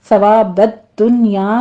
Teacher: دال کے اوپر تشدید ہے، سختی سے ادا کرتے ہوئے آگے نون ساکن کا قاعدہ اظہار مطلق ہو رہا ہے ، یہاں پہ آپ نے نون کا اظہار کرنا ہے۔ فعند